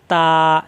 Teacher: জিহ্বার আগা উপরে দুই দাঁতের লাগিয়ে ছেড়ে দিলে হয়ে যায়